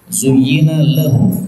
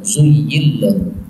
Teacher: nun ketemu lam, ini boleh idgham, zuyyil lahu.